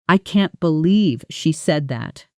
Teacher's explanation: The stress naturally falls on can't, believe, and said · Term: sentence stress, Sentence stress